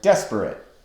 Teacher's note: We don't say desperate, we say desperate with the first syllable of the word accented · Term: dactyl